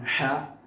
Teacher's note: ഹ നമ്മുടെ തൊണ്ടയുടെ സെന്റർ ആണ്